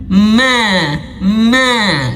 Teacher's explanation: tapi kalau huruf mim dia dibantu dengan hidung. Ma ma dibantu dengan hidung.